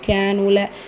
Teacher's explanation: கேஃபில் அலிஃப் மத்தா நூனில் வாவ் மத்தா 2க்குமே 2 ஹரக்கத்தளவு நீட்டம் கொடுத்து ஓதணும்